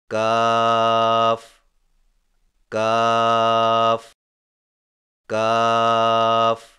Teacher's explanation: کاف کی ادائیگی میں زبان کی جڑ کو کوے کے قریب تالو پر لگا کر باریک آواز میں پڑھیں